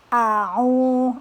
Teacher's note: huruf H keluar dari tenggorokan bagian tengah